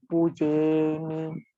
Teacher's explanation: Mi actually is 1 timing. But we normally recite mi as a long. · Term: long sound